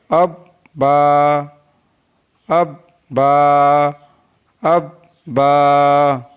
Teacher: तो बा दोनों होठों के तर हिस्से से अदा होता है